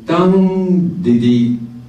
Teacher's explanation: Dung-di-di is a strong, weak, weak. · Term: dung-di-di type of rhythm